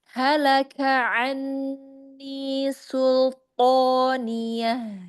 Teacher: ketika kaf ketemu ain, jadi tidak halaka langsung, tapi disebutkan dulu satu-satu. Diselesaikan kafnya baru ke ain.